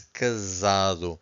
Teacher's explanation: So this S sounds like a Z. Why? Because we have an S between two vowels. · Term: Z sound